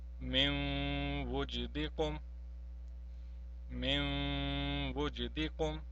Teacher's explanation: whenever noon tanween or noon sakin is followed by a waw, the first thing that will happen, the waw will be mushaddad. Similarly, in this case we have to prolong it as well. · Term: waw mushaddad